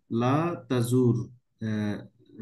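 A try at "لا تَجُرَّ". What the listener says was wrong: না, না, আপনি টান হবে না, লা তাজুর। নিয়মটা কেমন দেখেন, লা যখন আমি এখানে বসালাম, তখন রয়ের উপরও সুকুন দিতে হবে, তাই না, মাজ্জুম করতে গেলে।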